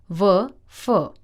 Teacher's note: दंतोष्ठ्य नीचे का होठ और ऊपर का दांत व फ। स्वर यंत्रीय स्वर यंत्र से ह।